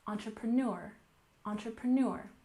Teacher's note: we have a slight stress on the first syllable but the main stress is on the last syllable